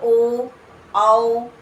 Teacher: ओ और औ इनका उच्चारण स्थान क्या है कंठ और ओठ · आप बोलो ओ औ, तो आप देख रहे हो गले से भी आवाज निकल रही है और ओंठ भी आपके उसमें भूमिका निभा रहे हैं